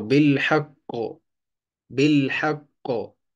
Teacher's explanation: موٹا بھی کریں گے، کلکلا بھی کریں گے، اور وقف بھی کریں گے۔ تو بالحق کو، بالحق کو، یہ آپ کا موٹا بھی ہو گیا، کلکلا بھی ہو گیا، اور اسی طرح آپ نے یہاں پہ وقف بھی کر دیا۔